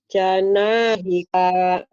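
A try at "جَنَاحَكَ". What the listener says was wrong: Pendek Bu, yang panjangnya nak doang. Janahika.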